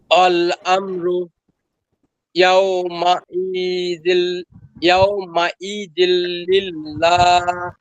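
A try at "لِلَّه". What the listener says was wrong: হ্যাঁ হাটা আরেকটু স্পষ্ট দরকার, এবং টানটাও একটু বেশি দরকার, যেটা আপনি বলছিলেন।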